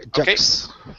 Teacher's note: You're pronouncing a K. You're saying juk. Okay, and your tongue is raising in the back.